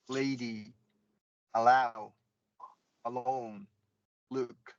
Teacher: Light L, very very easy, comes at the beginning of a word or before a vowel sound